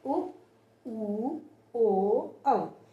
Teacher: जब हम इनका उच्चारण कर रहे हैं तो हमारे होंठ गोल हो जा रहे हैं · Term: वृत्तमुखी